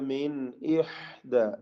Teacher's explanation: മിൻ സാക്കിന നൂൻ ഇൽഹാർ ഹൽഖി മണിക്കാതെ വെളിവാക്കുക